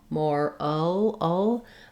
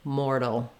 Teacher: these words have the same sounds except that mortal has a flap T and moral does not. So they both have first syllable stress.